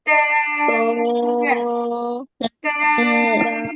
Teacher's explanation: জিহ্বার আগা উপরের দুই দাঁতের গোড়ায় লাগায় তারপর উচ্চারণ করতে হবে।